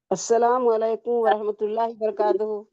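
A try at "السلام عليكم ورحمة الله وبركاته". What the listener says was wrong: अस्सलाम वालेकुम नहीं बेटे, अलैकुम अलैकुम। अस्सलामु अलैकुम व रहमतुल्लाहि व बरकातहू।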